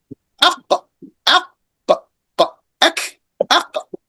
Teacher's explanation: N comes from the tongue. Ek comes also from the tongue, back of the tongue. Some people confuse that for the throat letter.